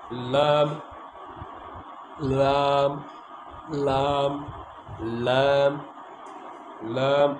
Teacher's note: জিহ্বার আগা কিনারা উপরে সামনের উপরের দাঁতের মাড়ির সাথে লাগায়